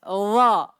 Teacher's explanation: dha tebal. Bukan karena bibir. Tapi karena lidah. Dha. Bibir tetap biasa.